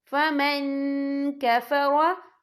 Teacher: نون ساکن کی آواز کو ناک میں چھپائیں گے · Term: اکفا